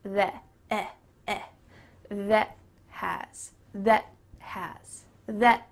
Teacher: Even though the word that has an A, that often in fast English, it becomes theh, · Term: short E